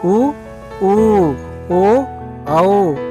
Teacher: పెదాల స్థితి గోళాకారంగా ఉంటుంది